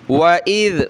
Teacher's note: وَإِذْ زبان نکالیں ذال پہ